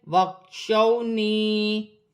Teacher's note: یا ساکن سے پہلے زیر یا مدہ بن رہی ہے، اسے ایک الف کی مقدار کھینچ کر پڑھا جائے گا